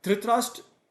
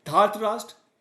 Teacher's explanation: Here Dhritarashtra short a, Dhartarashtra long a.